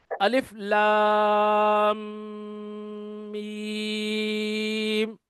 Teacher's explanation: یعنی میں جب میرا منہ بند ہے اور جی آواز میں اپنی ناک کے اندر میم کو غنہ کر رہا ہوں